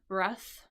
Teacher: breath as a noun sort of ends in that the unvoiced th consonant